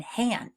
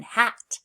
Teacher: If you look at the mouth picture, it shows us what our lips, teeth, and tongue do when we make the sound H. So for H, our lips are open and our air is pushing out from our throat.